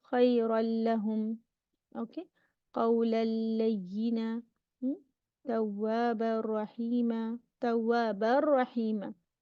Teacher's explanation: The second tanween is gone. You merge it with the ra. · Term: Idgham kamil bi ghair gunna